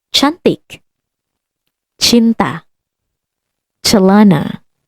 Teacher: These letters always has the sound of English, ch. So never the k of cat or the s of center. It's always ch for chop.